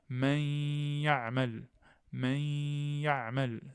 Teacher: Le point d'articulation disparaît, mais la nasalisation reste.